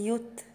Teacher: حرف التاء هنا ساكن فهعمل فيه همسة